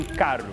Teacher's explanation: Lugares que receberam imigração italiana, por exemplo, falam um R seco, com a língua atrás dos dentes.